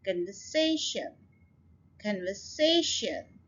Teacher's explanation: अब ये देखिए ये लंबा लफ्ज है, इसके अंदर 4 सिलेबल हैं और स्ट्रेस हमने थर्ड सिलेबल के ऊपर डालना है. कन्वर्सेशन, conversation, so say के ऊपर आप स्ट्रेस डाल रहे हैं.